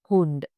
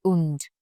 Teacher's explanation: It's always heard there. And if your word is starting with H, do not make it silent. It's always there like Hund. You can't say und.